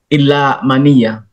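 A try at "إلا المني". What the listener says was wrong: Ilal, Pak. Jangan dikurangi, Pak.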